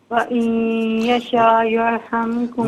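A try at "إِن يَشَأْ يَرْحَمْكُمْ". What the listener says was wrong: وَإِن یشاء نہیں ہے، إِن یشاء.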